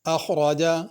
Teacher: خا کو بھی پر کرنا ہے، را کو بھی پر کرنا، اخرجا نہیں پڑھنا۔